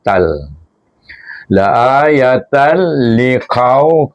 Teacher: lam ini baca dengan idgham tapi tak boleh dengan dengung